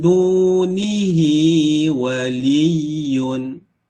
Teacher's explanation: Hi waliyun. Hi ni kalau kita wasal, panjangkan dia 2 harakat. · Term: mad silah qasirah